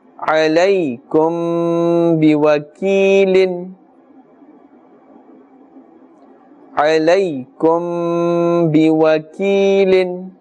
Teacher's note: after mim sakin is ba, and therefore ikhfa shafawi is taking place, ghunna is taking place.